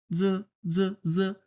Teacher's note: জ, জ, যখন উচ্চারণ হবে তখন কোনো বাতাস বের হবে না। স, স, স, স, স, অনেক পরিমাণ বাতাস বের হচ্ছে।